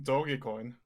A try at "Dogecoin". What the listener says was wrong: Dogecoin, not doggy. It's Doge. You pronounce it Doge.